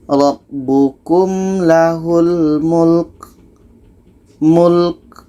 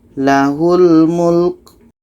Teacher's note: Ka ini ada hamasnya, ada anginnya.